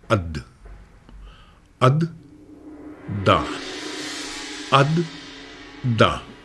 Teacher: نیچے ہم نے ٹچ کیا تو ت نکلا تھا, اوپر ٹچ کیا تو د نکلا. تو یہ دال کا مخرج ہوا, زبان کی نوک اور اوپر کا مسوڑا کا کنارہ